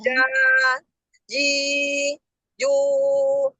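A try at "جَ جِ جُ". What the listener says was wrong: Dialirin lagi ke bawah. Ja, jaja, ja, ji, ju. Bisa merasakan enggak dari yang terhempas ke atas dengan terhempas ke bawah?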